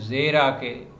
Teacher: اس کی یا کو مجہول کر کے بھی پڑھتے ہیں زیرہ کے، امالہ کی صورت بھی بن جاتی ہے زیرہ کے، اور کھینچ کے پڑھیں معروف کر کے پڑھیں تو پھر زیرہ کے۔